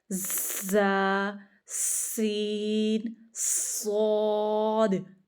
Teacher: ऊपर और नीचे के दांत आपस में मिलेंगे और जुबान की नोक अंदर लगेगी तो इसका हरूफ सफीरिया का मुख मरज निकल आएगा।